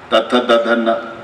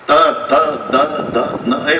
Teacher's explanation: प्रत्येक वेळेला जीभ आतून दाताला धक्का देते.